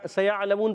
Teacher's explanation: ثم کلا ثم كلا سیعلمون، یہاں پر بھی ہم نے سیعلمون پڑھا، یہاں پر بھی وہی ہے، سین سیٹی والا ہے